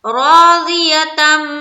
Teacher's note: میم کے اوپر شد آ گیا تو یہاں پر تھوڑی دیر لگانی یعنی کہ غنہ کرنا ہے